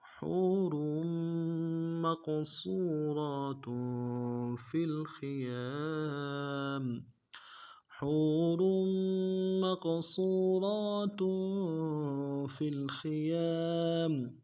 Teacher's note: را کی تنوین کو میم کے ساتھ ملانا ہے، اور را کو موٹا کریں گے